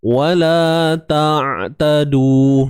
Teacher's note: Huruf Ain. Dia tengah kerongkong. Dan untuk kita menyelesaikan sebahagian sifat dia, jangan tahan suara.